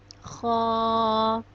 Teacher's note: خا حلق کے پہلے حصے سے ادا ہوتا ہے جو منہ کی طرف ہے۔ خا کو بھی ہم ایک الف کے برابر لمبا کرتے ہیں۔ · خا ہمارے حلق کے پہلے حصے سے ادا ہوتا ہے جو منہ کی طرف ہے۔